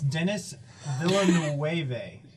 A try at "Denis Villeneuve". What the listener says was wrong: Dude, it's probably French, so you don't pronounce like the second half of that. It's probably Dennis Villeneuve or something. You definitely don't pronounce all like 15 E's in that name.